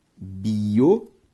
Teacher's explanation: Biométrico tem como sílaba tônica a antepenúltima, por isso uma proparoxítona.